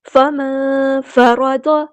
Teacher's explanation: نون ساکن کی آواز کو ہم یہاں پہ چھپا دیں گے، اخفا اور 2 کاؤنٹس ہم نے لمبا کرنا ہے۔ فرض، را ہمارا ہیوی لیٹر ہے پورا ادا کریں گے، ضاد بھی ہمارا ہیوی لیٹر ہے پورا ادا کریں گے۔